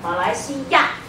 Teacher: Ya is always fourth tone.